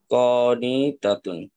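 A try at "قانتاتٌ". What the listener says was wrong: হ্যাঁ কনিতাতুন,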